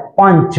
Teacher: कहां से उच्चारण आ रहा है? पंच। बोल के देखिए, नाक से आएगा उच्चारण। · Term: अंशुवार